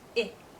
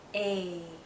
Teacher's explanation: Some vowels are very short, I, and some vowels are longer, A.